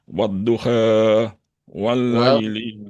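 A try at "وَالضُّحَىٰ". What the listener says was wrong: Wadduha, tahan, jangan buru-buru. Wadduha.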